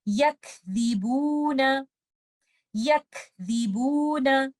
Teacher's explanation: So when you are reciting letter kaf, you have to remember to give hums. And for letter zal, keep your tip of the tongue out and do not add gunna while giving a mad here.